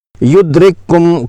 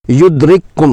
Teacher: درست طریقہ یہ ہے کہ دونوں کو ملا کر ایک مشدد حرف پڑھا جائے